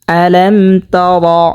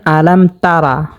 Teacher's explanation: আলাম তারা যদি পড়ে তাহলে শুদ্ধ হবে না, এখানে পড়তে হবে র, উচ্চারণ করতে হবে মোটা করে।